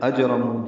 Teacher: جیم ساکن ہے، اس پہ قلقلہ ہے، را پر ہے، اور نو واو مدہ ہے، 2 حرکات لمبا ہے.